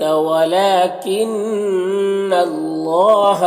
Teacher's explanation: نون مشدد غنہ ہوگا اور اللہ کے لام کو پر پڑھیں گے